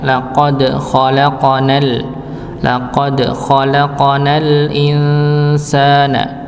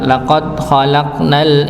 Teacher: Jadi dipantulkan huruf dalnya, laqad khalaqanal insana. Ya, huruf dal dan huruf qafnya dipantulkan. Maka jangan sampai kita baca tanpa dipantulkan. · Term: qalqalah